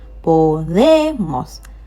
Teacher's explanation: Stress on the last but one.